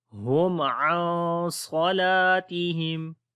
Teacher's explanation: پر اظہار شفوی ہوگا، میم کی آواز کلیئر ہوگی، ہم عن، اور نون ساکن کے بعد صاد آ گیا، حروف اخفا میں سے ہے، تو جو اخفا ہوگا وہ موٹا ہوگا